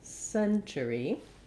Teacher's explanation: then the ur just says that the regular er and we end with the tense e